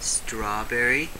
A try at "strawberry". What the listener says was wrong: Your mouth is too full.